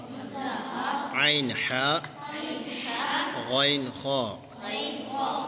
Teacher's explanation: غین خا حلق کے اوپر والے حصے سے ادا ہوتے ہیں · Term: حروف حلقی